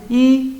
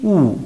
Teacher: En la I, la lengua va hacia adelante y en la U, la lengua retrocede. Ahí está. Entonces se llama vocal cerrada o alta porque en este caso la boca está prácticamente cerrada.